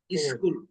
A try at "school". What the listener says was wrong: স্কুল না, স্কুল বলার সময় যেন ইটা একবারই না আসে, ঠিক আছে? যেহেতু আমরা শিখতেছি ইংলিশ, তারা যেন সুন্দরভাবে শিখি, it has to B what, স্কুল, ঠিক আছে? সো যেন স্কুলটা কখনো না আসে, স্কুল বলেন তো? হ্যাঁ, তার মানে এটার আগে কোনো আয় নেই, শুরুটাই হবে দিয়ে, হ্যাঁ? তো স্কুল।